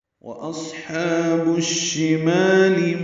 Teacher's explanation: واو ہونٹوں کی نا تمام گلائی سے ادا ہوگا